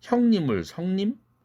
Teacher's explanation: 흐 플러스 이가 스로 변하는 사례를 봅시다